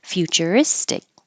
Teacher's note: I spell it fyu to represent your tongue starting in a high position